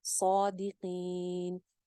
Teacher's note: ان کنتم صادقین, صادقین, قاف کو تھوڑا سا موٹا رکھیں گے, زیر کے ساتھ ہے, اور مد عارض لگا لیں گے